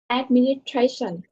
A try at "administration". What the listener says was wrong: So you missed the S sound at the middle of the word. Administration. Here, link the S sound to this. Station. So, administration. Link the S to the T. Station.